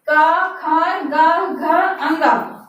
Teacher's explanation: का, खा, गा, घा, अंगा। और इनका उच्चारण कंठ से होता है